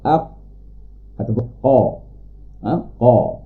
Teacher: qaf akan bertemu pangkal lidah, akan bertemu dengan lelangi atas yang lembut. Bila kita sentuh bahagian atas, ada keras sampai lembut.